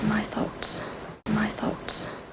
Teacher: uses a short vowel in thoughts when it should be long